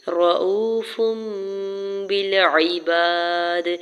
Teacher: بھی اقلاب کا rule apply ہو رہا ہے، اور یہاں پہ فا کے اوپر 2 پیش کی تنوین پر جو ہے وہ غنہ کرتے ہوئے فا کی تنوین کو جو ہے میم میں بدلیں گے ، رؤوف بالعباد، با کی زیر کو لام ساکن کے ساتھ